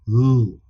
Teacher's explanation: putting my tongue against the palate and pushing the air through my mouth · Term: L sound